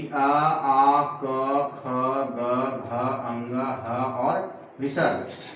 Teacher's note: इतने वर्णों का उच्चारण स्थान कंठ है, इसलिए इसे हम कंठय वर्ण कहते हैं